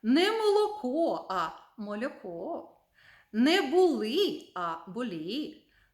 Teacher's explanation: коли є приголосний л і він не твердий а трішечки пом'якшений